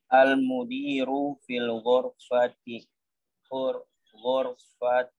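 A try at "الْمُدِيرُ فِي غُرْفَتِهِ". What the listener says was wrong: Kalau membaca harus diperhatikan ada alif lam atau tidak, ya. Itu fi ghurfatihi. Bukan fil, enggak ada alif lamnya. Fi ghurfatihi.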